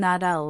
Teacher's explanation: In fast speech, that will almost always becomes that'll, and it can sound like thal or even that'll with a very soft T. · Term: contraction